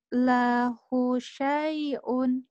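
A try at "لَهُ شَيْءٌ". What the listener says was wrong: Lahnya jangan panjang, hunya yang panjang. Lahu syai'. Lahu syai'un.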